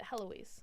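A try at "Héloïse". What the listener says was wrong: So in French, they don't pronounce the H. it's Eloise.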